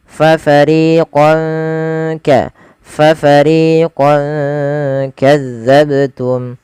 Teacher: Nah, ini ada fathatain bertemu dengan kaf, maka fathahnya fathahnya dikasih warna hijau karena ia bacaan ikhfa. Cara membacanya samarkan tanwinnya kepada huruf kaf.